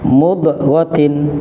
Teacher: Nah, jadi kesalahannya huruf dotnya terbaca tawallud atau dipantulkan atau menyerupai qalqalah